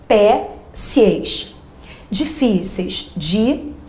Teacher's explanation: Observe que nas duas primeiras o acento está aparecendo na penúltima.